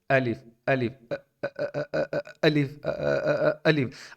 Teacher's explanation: الف میں جو سٹارٹنگ پوائنٹ ہے حمزہ، اس میں تھوڑا سا نا آپ کو جھٹکا فیل ہو رہا ہوگا